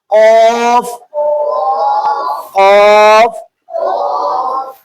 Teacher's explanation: وہیں سے جو گوشت کا لوتھڑا نیچے لٹک رہا ہے، وہیں سے لفظ قاف ادا ہوتا ہے۔ منہ کو تھوڑا گول کر کے منہ میں ہوا بھر لینا، اسی جگہ سے نکالنا ہے قاف قاف۔